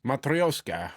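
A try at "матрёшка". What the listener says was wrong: You said Matrioska without the sh sound.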